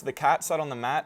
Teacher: I only really put stress on cat and mat. So sat on just kind of gets mushed between the syllables. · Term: stress-timed language